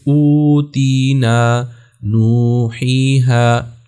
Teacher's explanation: اب یہاں پر دیکھیں واو مدہ ہے لیکن اس کے اوپر مد نہیں ہے، اس وجہ سے کہ اس کے بعد نہ تو حمزہ ہے نہ حرف ساکن ہے، تو یہ مد اصلی ہے، یعنی واو کو جو ہم ایک الف کے برابر یہاں پر مد کریں گے، اس کو لمبا کریں گے